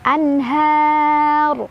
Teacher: An ada izhar karena ada nun sukun ketemu ha, dibacanya nun sukunnya jelas. Anhar, har mad arid li sukun karena ada mad tabi'i ketemu huruf hijaiyah yang disukunkan.